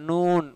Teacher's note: நூன் இது என்ன after நூன் மாதிரி தான், ஒரு பெரிய டிஃப்ரென்ஸ்லாம் இல்லை. நூன் மூக்குடைய உதவியோடு வரும், மூக்கு இல்லைனா இது உச்சரிக்கப்படாது, மூக்கு அடைச்சிங்கன்னா வராது, நூன் வராது.